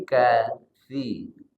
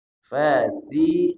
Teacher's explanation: Kalau kasi huruf sa ujung lidah ketemunya dengan gigi seri atas. Kalau fasi ketemunya lebih cenderung ke gigi bawah.